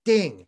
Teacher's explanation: it's pronounced ding uh d n g with a fourth tone